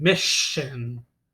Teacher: the two S's aren't making a S sound, it's making a sh sound. Mission.